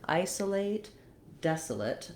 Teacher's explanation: So same syllable stress pattern, isolate, desolate. The des is stressed, it's longer. It has the clear vowel like in red. We then have our O that says schwa, the sound.